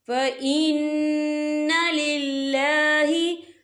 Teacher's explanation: وَإِن تَكْفُرُوا فَإِنَّ لِلَّهِ، یہ دیکھیں فَإِنَّ، یہاں نون مشدد ہے تو یہاں پر غنّہ ہوگا، اور لِلَّهِ، یہاں اللہ کا نام باریک پڑھا جائے گا کیونکہ اللہ کے نام سے پہلے زیر ہے۔